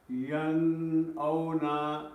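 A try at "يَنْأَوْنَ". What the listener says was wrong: The way you're reading it, Agha sahab, is you're reading it a bit with gunna. You're saying yan awna. Are we meant to be reading it with gunna or without gunna? Without gunna.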